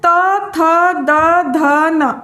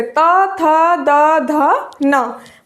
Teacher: आप बोलेंगे तो आपकी जो जीभ है वो दांतों को टच करेगी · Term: दंतव्य